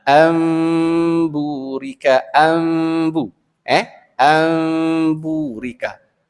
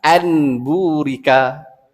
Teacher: Dari sudut bahasa Arab memang betul baca anburika. Tetapi dalam Quran kalau baca dengan bertajwid mesti ambu. Ambu. Tak boleh anbu. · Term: iqlab